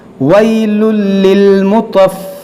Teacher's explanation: तनवीन के बाद लाम है तो यहाँ पर होगा इदगाम बग़ैर गुन्ना के